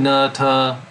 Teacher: if you say na, ta, you're saying it in the same part of the mouth.